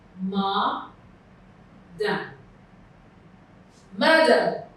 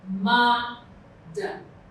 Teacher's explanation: The part that is loudest is the first part, which is the first syllable. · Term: primary stress